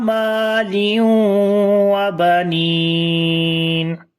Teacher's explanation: After tanween there is waw, we make idgham with gunna. There is ya madda, and if we stop it's become madde aris.